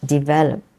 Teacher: So develop, the stress is in the second syllable, develop. But when it becomes a noun, it changes to development.